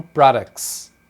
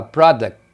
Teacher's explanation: Agora, no plural, eles acabam tirando o T